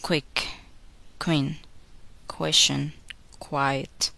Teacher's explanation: Don't make the puff of air when k is followed by the sound w.